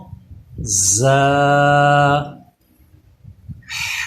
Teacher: غین دال ذال ہے، اس کا مخرج بھی آپ پڑھ چکے ہیں کہ ثا، ذال اور وا، ان تینوں پہ سیٹی پیدا نہیں کرنا ہوتی، بلکہ زبان اوپر کے دانتوں سے چپکی رہتی ہے ان تینوں پہ، اسی طرح ان کو پڑھا جاتا ہے۔ یہ جو زا ہے اس پہ سیٹی پیدا ہوگی